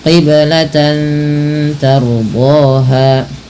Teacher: ro apabila didahului dengan huruf fathah maka dibaca dengan ro tafhim ro yang dibaca dengan tebal